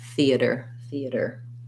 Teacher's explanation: it sounds kind of like the-a-der with first syllable stress, theater, theater.